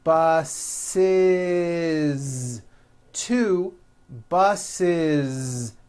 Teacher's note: The last sound you hear is that voiced Z.